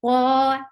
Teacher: Qa is 2 counts long, and make sure you don't ever circle your lips for any heavy letter. To make any letter heavy, you will lift your tongue up to make it heavy.